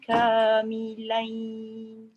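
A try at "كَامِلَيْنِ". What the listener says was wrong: Jangan masuk hidung sangat. Kamilain. Jangan milain.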